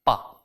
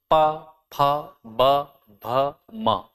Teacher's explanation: मतलब जैसे मान लीजिए कि आपको बोलना है पा, तो पा बोलते समय आपके होंठ दोनों आपस में टच करते हैं, इसका मतलब ओष्ठ से उच्चारित होता है पा।